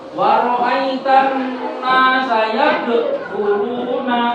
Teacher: Waro'aitan nasa yadkhuluna. Nah, di sini ada huruf qalqalah berupa dal. Yadkhuluna dipantulkan, jangan sampai tidak dipantulkan